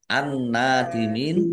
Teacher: nun tasdid dibaca gunah atau mendengung ditahan Biar tampak mendengungnya